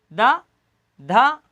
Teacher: तो अपनी जो जीभ है ये आगे के दांतों को अंदर की साइड से स्पर्श करेगी, वो भी ऊपर वाले दांतों को।